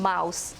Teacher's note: It is described as a voiced bilabial nasal consonant.